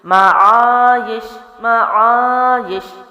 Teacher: الف مد لمبا کیا، یش کو میں نے جلدی چھوڑ دیا کیونکہ جزم والا تھا اور یا کے نیچے زیر تھی.